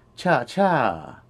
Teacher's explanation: the word for slow is cha which is a high tone